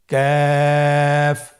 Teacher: কাফের মাখরাজ হলো জিহ্বার গোড়া থেকে একটু আগে বাড়িয়ে তার বরাবর উপরে তালের সঙ্গে লাগিয়ে উচ্চারিত হয়। তাহলে আমরা কফ যেখান থেকে উচ্চারণ করেছি একটু আগে বাড়িয়ে সেখান থেকে আমরা তার বরাবর উপরে তালের সঙ্গে লাগিয়ে হরফটি উচ্চারণ করব।